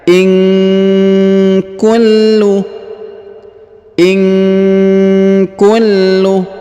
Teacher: huruf lam berharakat tasdid maka kita tahan dan kita tekan